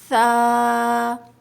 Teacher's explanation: نرمی سے ادا ہوگا, زبان کی نوک باہر آئے گی